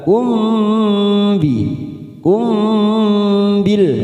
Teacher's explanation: Ayamurukum mim sukun bertemu ba, bacaan ikfa safawi, kita tekan 3 ketuk, siap masuk pada huruf ba. Umbi kita dengungkan selama 3 ketuk ya, siap masuk pada huruf ba.